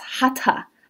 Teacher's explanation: In Sanskrit, the T H do not make the th sound like they do in English.